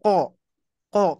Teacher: Huruf kof di pangkal lidah ya, di pangkal lidah.